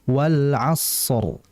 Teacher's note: shadnya ditahan dulu karena shad punya sifat rikhawah mengalir.